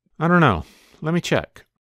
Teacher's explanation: You can hear that combined the two words let me into one when he said lemme. He also shortened the two words don't know into one when he said dunno.